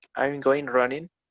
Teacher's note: they don't produce the g